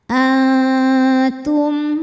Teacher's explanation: tingkatan dengung aqrab ikhfa aqrab sebab nun sukun menghadapi huruf ta cara membaca Nun sukunnya adalah samar-samar siap-siap menuju makhraj huruf ta disertai dengung dengungnya sedikit karena makhraj huruf ta masih dekat dengan Nun a ujung lidah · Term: ikhfa Hakiki